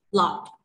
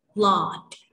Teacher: untuk British accent ini bacanya tidak panjang. Lot. Seperti itu. Tapi untuk general American, untuk American accent-nya ini lebih panjang. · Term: long a